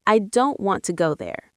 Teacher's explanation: the smaller words like I, to, there are said more softly or quickly